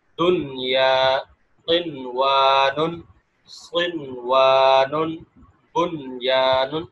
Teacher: ایک ہی کلمے میں ہوں گے تو پھر ادغام نہیں ہوگا بلکہ اظہار ہوگا، یعنی نون کو اسی طرح پڑھا جائے گا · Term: اظہار مطلق